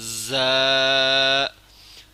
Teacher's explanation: زا جو ہے یہ سخت پڑھنا ہے اور باریک پڑھنا ہے، موٹا بھی نہیں کرنا ہے اور نرم بھی نہیں پڑھنا ہے۔